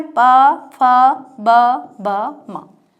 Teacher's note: ओष्ठ का मतलब होता है होठ, जो होठों से उच्चारित किए जाते हैं